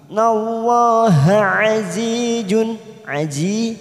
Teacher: aji kasrah bertemu ya sukun 2 harokat kita panjangkan